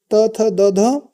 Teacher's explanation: त थ द ध बोले जाते हैं दंत से